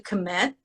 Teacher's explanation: meanings right so if you commit to something or to someone the verb to commit with a schwa sound in the beginning